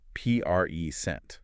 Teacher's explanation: If I stress the first syllable, present. It's a noun, a gift.